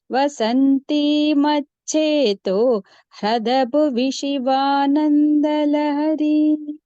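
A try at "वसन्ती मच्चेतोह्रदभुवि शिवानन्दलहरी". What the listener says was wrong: Bha Mahaprana should be clearer. And also, if possible, please don't pause after Macheto. Macheto Hrada Bhuvi.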